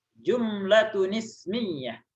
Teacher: ini kalau dibaca tun dengan is maka digabung tunis ya. Ditambahin nun zaidah di sini.